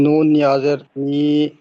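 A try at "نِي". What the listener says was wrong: আর একটু বেশি করে টান দেবে, নুন ইয়াজের নি। আরিনি।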